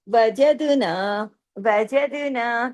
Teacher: وجدنا تمام باریک حروف ہے، زبان کو نیچے رکھ کے ادا ہوں گے. لیکن ایک چیز اس کے اندر، دال کو دیکھیے، دال جزم کی حالت میں ہے.